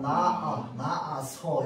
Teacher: 발음할 때 분명히 히읗 소리가 안 나잖아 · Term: 히읗 탈락